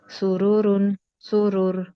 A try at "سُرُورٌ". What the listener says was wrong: موٹا کریں رو کو، سورورو سرورن سرور،